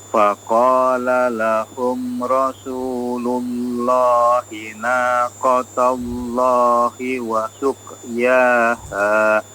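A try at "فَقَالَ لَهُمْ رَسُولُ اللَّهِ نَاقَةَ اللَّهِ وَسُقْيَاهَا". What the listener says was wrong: Taknya diperjelas fathahnya ya. Naqatallah, jangan naqatallah ya. Taknya ikut jadi tebal ya. Kemudian qafnya diperhatikan qalqalahnya wa suqyaha, suqyaha.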